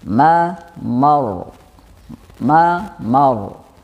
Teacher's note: Bedanya kalau ma, mar ini mengalir suaranya dengan dibaca tafkhim atau tebal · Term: sifat bainiyah